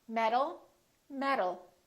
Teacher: These two sounds sound exactly the same because the T changes into a D when it's between two vowels.